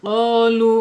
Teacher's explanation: Al-lisannya yaitu di pangkal lidah ya, di pangkal lidah, jangan lupa nih pangkal lidah, yaitu pangkal lidah menyentuh atasnya ya, langit-langit yang mempunyai anak lidah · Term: qaf